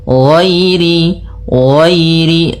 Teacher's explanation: nah ghain-nya tebal, ghairil, tapi tidak setebal tebal sampai kepada huruf shad dan huruf dhad, karena huruf dhad yang paling tebal.